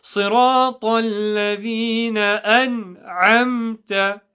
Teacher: alif from bottom of the throat, ain from the middle of the throat.